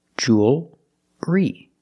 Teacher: what about the L does it change no it doesn't change it's still a dark L because you have the L before a consonant the L is not between vowels